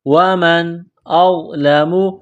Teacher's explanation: نون ساکن کے بعد حمزہ ہے، حروف حلقی ہے تو نون ساکن پر غنہ نہیں کریں گے، آواز ناک میں نہیں چھپائیں گے